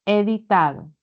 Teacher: En editado predomina la D y también la T. La D que se está repitiendo. Ambas tienen algo en común que son dentales. D y D. Arenoso.